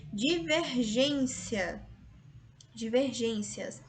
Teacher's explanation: Paroxítona, a penúltima sílaba é mais forte, terminada em ditongo.